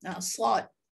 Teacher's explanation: Pangkal lidah juga ditekan ke langit-langit untuk menghasilkan suara tebal. Untuk menghasilkan sifat istiqlaq itu.